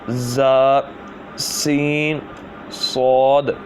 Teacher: ان 3 حروف زا، سین، صاد کو ادا کرتے وقت سیٹی کی طرح آواز نکلتی ہے، اس لیے ان حروف کو حروف صفیریہ یعنی سیٹی والے حروف کہتے ہیں۔